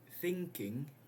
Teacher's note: N has moved to the position of K, so now it is a velar nasal.